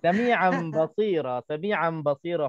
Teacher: Bila bertemu dengan ba, maknanya kita tukarkan tanwin itu, nun mati yang ada pada tanwin, kita tukar menjadi huruf mim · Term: iqlab